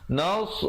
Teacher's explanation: Kalau nas jadi huruf sin. Yang betulnya kita cari di sini huruf sad.